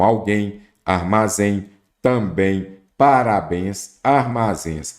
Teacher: oxítona, a sílaba tônica é a última